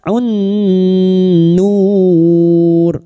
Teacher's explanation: nun yang bertasdid kita dengungkan selama 3 harokat